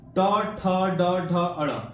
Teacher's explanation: इसको बोलने पर जो है ना आपका जीभ जो है मुड़ जाता है। ट ठ ड ढ अड़, इसको बोलने पर जीभ मुड़ जाता है, तो इसका आंसर मूर्धा हो जाएगा।